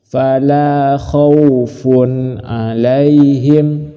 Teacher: Langsung, tidak usah berdengung, dijelaskan. Tanwin jelas, ain jelas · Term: idhar